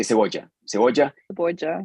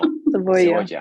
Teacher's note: And that B in the middle of the word, we don't touch the lips. So we don't say cebolla.